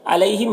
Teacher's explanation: یہاں پر یالین سے نرم آواز کے ساتھ جلد پڑھیں گے، میم اظہار شفوی ہو رہا ہے، اسے جلد پڑھنا۔